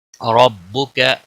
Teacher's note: را زبر کی وجہ سے پر پڑا جائے گا